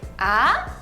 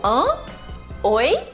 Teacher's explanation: o segundo tom é um tom de dúvida, um tom de interrogação. É tipo, hã?